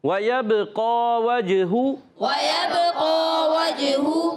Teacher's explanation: با میں بھی کلکلا ہو رہا ہے، جیم میں بھی کلکلا ہو رہا ہے